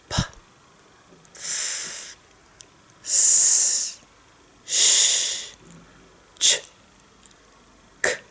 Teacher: These are the unvoiced sounds. There is no sound with those letters. You only hear the air, and it's your mouth that make the air sounds.